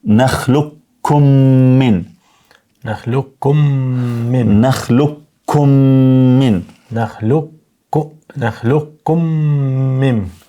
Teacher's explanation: Alam nakhluqukum min ma, tash nakhluqukum min, nëse ndajmë alam nakhluqukum min, këtu është, do të thonë idgham, el-idgham el-shafawi, do të thonë pas mimit sakin, se pas mimit sakin vjen një mim i zëshëm apo i theksuar, edhe prandaj duhet të shkrihet